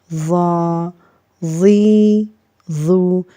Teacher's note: اس کے بعد دوسری جو لائن ہے یہ ہے ضا زبر ضا، ضا زیر ضی، ضا پیش ضو، ضا ضی ضو۔ ضا کو اور ضاد کو اور طا کو ہم موٹا کر کے پڑھیں گے، پر کر کے پڑھیں گے جی۔